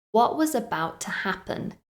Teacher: if you listen carefully you'll notice that I didn't pronounce the T on what and about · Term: omit a t sound